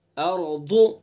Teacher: ضاد کو زبان کی کرور اور اوپر کی ڈاڑوں کی جڑ